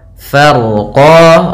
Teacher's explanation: Farqa, yaitu fa, kemudian ro-nya dibaca dengan tebal karena huruf ro yang dia sukun sebelumnya fathah. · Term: ro-nya tebal